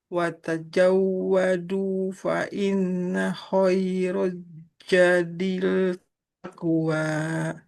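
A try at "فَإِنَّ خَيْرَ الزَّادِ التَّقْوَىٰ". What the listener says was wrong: Fa inna khairaz zadi. Nah, huruf zal jangan ja. Seperti huruf Z. Za.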